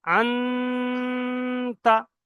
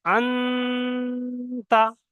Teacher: নুন সাকিনের আওয়াজটাকে নাকে ধরে রাখছি। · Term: ইকফা